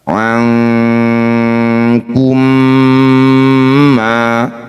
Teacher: Nun sukun bertemu kaf atau kof disebut bacaan namanya ikhfa ab'ad. Bunyi nun ganti ang, dengungkan 2 harokat.